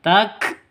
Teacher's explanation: Takfurun kaf sukun. Kafnya huruf hames. Harus ada nafas yang keluar.